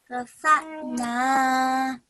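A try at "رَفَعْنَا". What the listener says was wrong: Okay, well done. Try not to jerk on the I.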